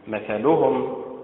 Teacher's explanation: النبر فيها على حركة الميم